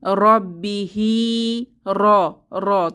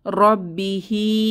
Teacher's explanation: মোটা র গুলো বলার সময় আমাদের জিহবার আঘাতে তাকরার বা একটা কম্পনের সৃষ্টি হবে